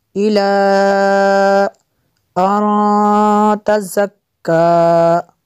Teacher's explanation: نون ساکن کے بعد تا حروف اخفا میں سے یہاں پہ اخفا ہوگا اور آگے زا کو سخت پڑھیں گے.